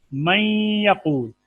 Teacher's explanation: واو اور یا میں جب نون کا ادغام ہوگا تو نون کا غنہ جو ہے وہ نظر آئے گا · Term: ادغام غنے کے ساتھ